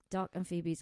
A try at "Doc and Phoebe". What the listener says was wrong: Doc and Phoebe.com. No S at the end.